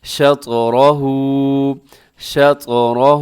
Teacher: یہاں طا موٹا پڑا جائے گا اور قلقلہ بھی ہوگا، را موٹا ہے، ہا الٹا پیش کی وجہ سے کھینچ کے پڑھنا ہے